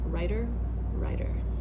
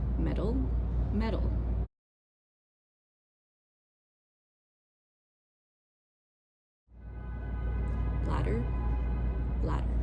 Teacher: Here's an example where it's two different words. One is spelled with a T, one is spelled with a D, and we say it exactly the same.